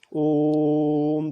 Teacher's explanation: जैसे आप बोलते हैं भैया या भैया, तो उसमें जो आ की मात्रा लास्ट में आ रही है, या हम जब ओम बोलते हैं ओम, तो ये जो ओ की मात्रा है ये बहुत लंबा समय ले रहा है, यानी ये दीर्घ स्वर से भी दुगना समय ले रहा है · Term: प्लुत स्वर